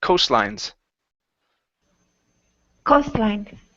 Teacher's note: put the stress at the very beginning